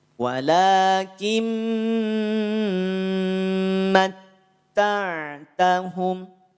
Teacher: Leburkan nun sukun pada huruf mim disertakan dengan tahan 2 harokat dan dengungkan cara bacanya. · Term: idgham bi gunnah